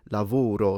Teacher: So they will close the o but they don't go all the way to oo.